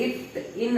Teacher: அந்த அன்னத்தின் மேல் அன்னத்தின் நுனியோட போய் தொடும் இட்டு ன்னு வருதா அதான் நாவின் நுனி அன்னத்தின் நுனியோடு பொருந்துவதால் பிறக்கிறது